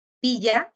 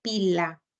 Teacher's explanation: los fonemas laterales del sonido de la doble L y el sonido de la l también van a cumplir la función distintiva